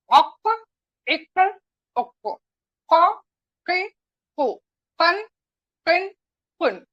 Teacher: قاف کیا ہے، پڑجیب کا اندرونی حصہ، یعنی کہ جو سافٹ جو نرم حصہ ہوتا ہے وہاں پر ٹچ ہوگی ہماری زبان تو قاف نکلے گا